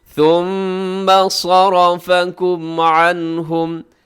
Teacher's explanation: ثُمَّ صَرَفَكُمْ عَنْهُمْ، ثُمَّ میم کے اوپر تشدید ہے تو غنہ کریں گے۔ صَرَفَكُمْ، صاد موٹا، را موٹا، باقی اس میں باریک ہیں۔